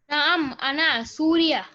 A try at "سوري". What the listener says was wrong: Suri. You have to end at the ya. Okay, so Suri, Suriya or Suriyun, Suriyatun. If you say Suriya, you are ending at the ta marbuta. You are ending at the ha, in fact.